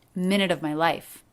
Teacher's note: Now here the V sound isn't dropped. It is said lightly.